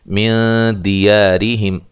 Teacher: نون ساکن کا اخفا ہے، باریک اخفا ہے ، دی یا الف مدہ ہے، را کو باریک پڑھیں گے،